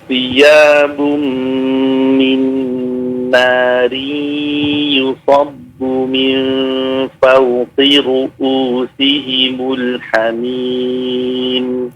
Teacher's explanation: Ru'u bukan ain tapi hamzah ya.